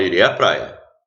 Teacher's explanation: a crase é a soma da preposição a com o artigo a. Só que eu não pronuncio os dois, eu não pronuncio, vira um som só.